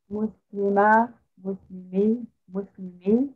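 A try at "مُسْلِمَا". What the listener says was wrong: No, not ma. Muslima, first of all, we need to make it a little long to differentiate between Muslimu and Muslima, right?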